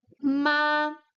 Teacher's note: the first tone it's high it's long and it's stable on the high tone